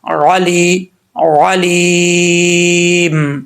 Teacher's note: آگے یا مدہ ہے، ایک الف کی مقدار لمبا کریں گے